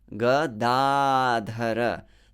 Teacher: Notice where is the long vowel. Gadadhara. The second one, not the third one. Often you hear Gadadhar from devotees.